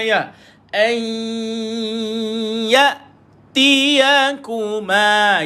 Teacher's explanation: Qabla an nun qasar jumpa dengan ya, maka dibaca dengan dengung masuk. Idgham ma'al gunnah.